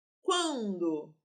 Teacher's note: esse N está fazendo um dígrafo com a letra anterior, produzindo um som nasal. O que faz com que este som aqui, olha, o A tenha som nasal.